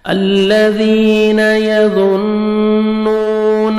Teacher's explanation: واو مدہ نون کو 1 سیکنڈ کھینچیں گے